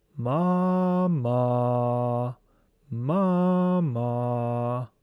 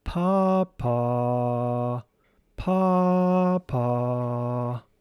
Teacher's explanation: One's voice is raised with the first syllable of each of the words · These syllables are ma ma pa pa On pronouncing the first syllable ma, this syllable will be vocalized in a very high and acute manner. On vocalizing the second syllable ma, it will be vocalized in a very low manner.